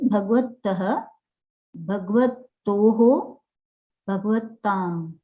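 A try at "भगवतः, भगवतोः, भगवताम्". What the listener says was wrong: Bhagavatam. There's no break. If you give a break, you make us wonder if there is a samyukta aksharam there. Bhagavatam.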